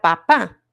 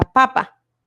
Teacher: en papá, la sílaba con acento es la última, identificada con una regla ortográfica que es la tilde. Y en la segunda palabra, la sílaba acentuada es la penúltima.